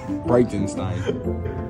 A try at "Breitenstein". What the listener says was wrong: Bright. And Stein. Think of the word bright, like a bright light. No, you said Brett. You said like Brett, like the name. Like bright, and then.